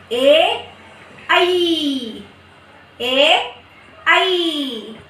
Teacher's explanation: तो कैसे, जब इनका उच्चारण स्थान कंठ से निकल कर आते हैं लेकिन तालु से लगकर बाहर आते हैं। कंठ से आते हैं लेकिन तालु से लगकर बाहर आते हैं, इसीलिए इनका उच्चारण स्थान कंठ तालु होता है।